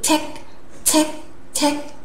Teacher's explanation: Chúng ta đọc bật hơi check check check một luồng hơi bật ra